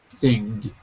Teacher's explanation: if you say it softly your tongue just stops on the back of your throat